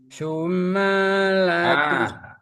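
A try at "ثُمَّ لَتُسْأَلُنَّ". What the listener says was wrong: Nggak boleh panjang. Sumalatus.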